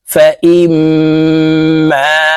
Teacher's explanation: এই মিমের সাথে গুন্না সহিত পড়তে হবে কারণ ওয়াজিব গুন্না